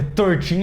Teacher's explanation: a sílaba tônica, realmente onde a gente vai colocar ênfase na pronúncia é no teen, no final